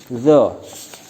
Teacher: Makharijul hurufnya bertempat pada ujung lidah mengenai ujung dua gigi depan atas